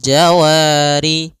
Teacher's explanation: Fathah bertemu alif panjangnya dua harakat. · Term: mad thabi'i